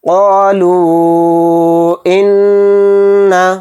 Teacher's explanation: تو دیکھیے یہاں پہ حروف مدہ کے بعد حمزہ دوسرے کلمے میں آ رہا ہے، یعنی الف کی شکل میں، تو اس میں مد منفصل کا قاعدہ ہوگا، یعنی اس مد کو 3 الف کی مقدار ہم کھینچ کر پڑھیں گے، اور نون پر تشدید ہے تو نون میں غنہ ہوگا